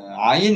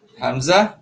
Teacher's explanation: Ain dekat tengah kerongkong, hamzah dekat bawah kerongkong